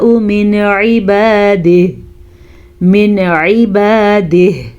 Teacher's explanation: نون ساکن کو ظاہر کر کے پڑھیں گے بغیر غنے کے پڑھیں گے